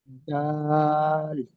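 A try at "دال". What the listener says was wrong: আরো একটু টান দিয়ে বলেন, দাল।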